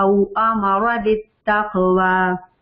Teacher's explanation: او امر لمبا نہیں کرنا, موٹ اس کو فل ماؤتھ پڑھنا. ہیوی ہے را لیکن اس کو لمبا نہیں کرنا.